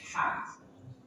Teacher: huruf ha dari tengah tenggorokan